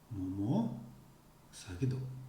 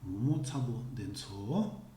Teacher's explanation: It is the last syllable of the whole clause that gets stressed.